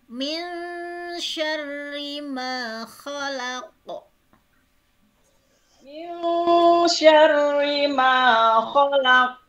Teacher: Min lebih ke ny sebetulnya ya, enggak terlalu ang ya kalau sya itu.